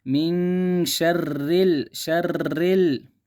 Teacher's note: را کو کسرہ ہے، را کو باریک پڑھیں گے